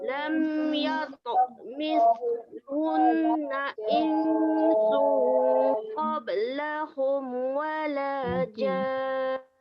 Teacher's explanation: Cumanya nak kemaskan sedikit pada huruf sa bertanda sukun. Okey, supaya kita lepaskan sedikit angin.